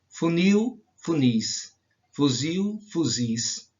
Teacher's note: a sílaba mais forte ou a sílaba tônica é a última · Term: oxítonas